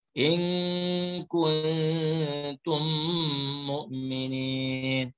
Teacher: Kemudian seterusnya lagi kuntum mukminin mim mati bertemu dengan mim namanya idgham mislain. Mim yang pertama dimasukkan ke dalam mim yang kedua serta didengungkan.